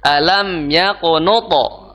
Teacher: Salah satu sifat huruf to itu qalqalah, ya, suaranya mantul